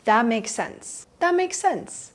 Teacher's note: Completely ignore the T at the end.